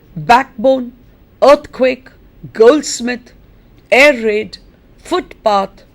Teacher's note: notice that the stress is on the first syllable